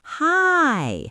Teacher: It's extended, hi, to show that is genuinely pleased to see her neighbor. It's not a robotic hi, it's warm.